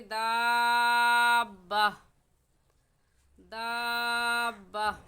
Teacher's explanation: گول تا وقف کی صورت میں ہا پڑھی جاتی ہے